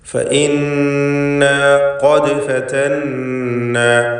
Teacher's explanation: ഫഇന്നാ ഖദ് ഫതന്നാ ഖദ് എന്നതിൽ ഖാഫിന് തഫ്ഖീം കൊടുക്കണം. ദാലിൻ്റെ സുക്കൂൻ ഖൽഖല സുഗ്റ നൽകി ശബ്ദം ഹറക്കത്ത് പോലെ ചലിപ്പിക്കണം.